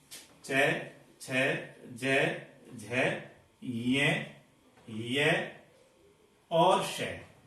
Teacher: जब जीभ ऊपर के तालु भाग को स्पर्श करती है तब इनका उच्चारण होता है, इसलिए ये ध्वनियां तालव्य ध्वनियां कहलाती हैं।